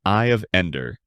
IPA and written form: aɪ əv ˈɛndər (Eye of Ender)